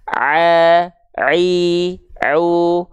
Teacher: kalau Ain dia tidak mengalirkan nafas